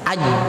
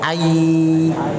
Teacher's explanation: Huruf jim dia menempel. Apa yang menempel? Tengah lidah bertemu dengan tengah langit mulut bagian atas.